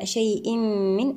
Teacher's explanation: التنوين مع حرف الميم، إدغام بغنة كاملة